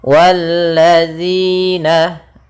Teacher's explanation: Kemudian walladzina, di sini ada alif lam syamsiyah, yaitu alif lam yang ditulis tapi tidak dibaca, langsung ke huruf lam yang berharakat tasydid